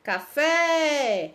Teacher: a sílaba tônica da palavra café é o fé, né? Nós falamos com mais intensidade, já tá acentuado, quando tá acentuado fica mais fácil ainda, ó.